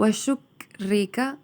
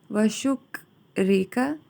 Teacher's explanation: کاف کو ہلنے نہیں دینا آپ نے کیونکہ حروف قلقلہ نہیں ہے اور ساکن بھی ہے